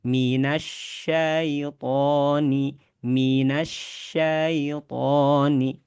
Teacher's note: Ya ada di bagian tengah lidah sama kayak huruf shin. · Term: huruf ya